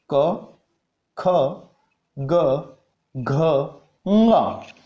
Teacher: जब इनका उच्चारण करते हैं तब हमारी जिह्वा जो है वो कंठ से स्पर्श करती है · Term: क वर्ग